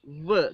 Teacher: when we produce the sound v, there is again partial closure, and the air passes with a little bit vibration. This is why these are called fricatives. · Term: labiodental fricatives